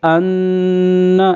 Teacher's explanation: یہاں پہ غنہ ہو رہا ہے، نون مشدد ہے